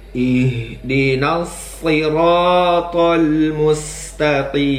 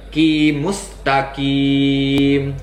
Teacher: Huruf qaf haruslah berada di pangkal lidah ya, jangan terdengar seperti huruf kaf ya, ki ya. Tidak, huruf qaf adalah huruf tebal, jadi pangkal lidahnya harus naik ke atas.